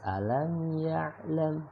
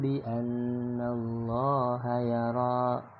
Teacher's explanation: Ada mim ketemu ya, dibaca jelas alam ya'lam, tanpa ada dengung, tanpa ada pantulan, tetapi jelas alam ya'lam.